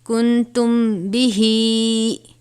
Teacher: کاف نون پیش کن، تا میم پیش تم، کن تم، با زیر بی، کن تم بی، ہا کھڑی زیر ہی، کن تم بھی ہی. اب یہاں پہ میم ساکن کے بعد حرف با آیا ہے تو یہاں پر اخفاء شفوی ہوگا، یعنی ہم غنہ کریں گے